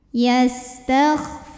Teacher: karena ada wau sukun yang didahului baris damah cara membacanya dipanjangkan Fanya dua harakat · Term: Mad Thobi'i, mad tabi'i zahiri